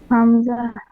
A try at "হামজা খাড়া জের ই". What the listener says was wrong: জের নয়, হামজা খাড়া জের, খাড়া জের রয়েছে।